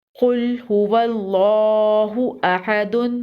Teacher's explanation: قوف کو پر پڑھیں گے، قوف حروف مستعلیہ میں سے ہے۔ اللہ کے لام کو بھی پر پڑھیں گے۔